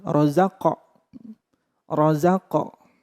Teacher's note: Kemudian ada rozaqnahum qaf sukun namanya bacaan qalqalah sughra. Qalqalah itu dibaca memantul